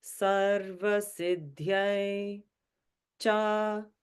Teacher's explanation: Sarva is in the middle note. Siddhyai goes down, back up to the middle.